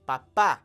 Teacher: Papa falls on that last a